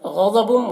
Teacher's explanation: غین الضاد دونوں حروف مستعلیہ میں سے پر پڑھیں گے